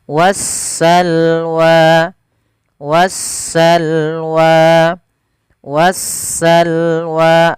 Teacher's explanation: jelas sedangkan di lam alif lam syamsiah yaitu suara sinnya Maaf suara Alif lamnya diidgamkan ke huruf Sin sehingga sinnya berharakat tasdid